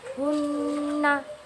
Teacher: ujung lidah menekan lahmatul asnan, yaitu daging tempat tumbuhnya gigi seri atas, dan bersamaan dengan didengungkannya secara nyata ke pangkal hidung selama 2-3 harokat. · didengungkannya secara nyata ke pangkal hidung selama 2-3 harokat. Contohnya, hunna. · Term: nun musyaddadah